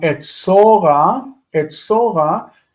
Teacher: Okay, so etzor would become etzora. Etzora and the accent shifts to the end, and the O reduces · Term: cohortative ending